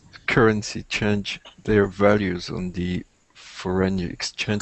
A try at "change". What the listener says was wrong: And when you say change, you want to get away from the French sound in English, not change, but like a change. Change.